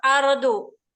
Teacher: Rohnya tafhim karena berharokat sukun. Sebelumnya fathah.